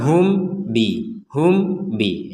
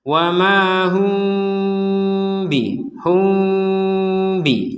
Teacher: mim sukun bertemu dengan ba maka kita membacanya dengan samar membacanya dengan samar samar itu artinya apa Jangan dibaca dengan jelas · dibaca dengan samar, ya ada dengungannya sedikit